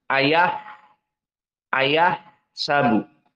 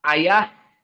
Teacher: sifat dari ha, dia hams dan rokhawah. Maka ada jenjang waktu ayah, ayah, sabu.